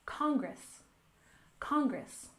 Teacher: the first one is Congress we stress the first syllable